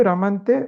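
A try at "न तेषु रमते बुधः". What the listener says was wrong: Ramante no. Ramante means just now we saw. That is Ramana. This is Ramate.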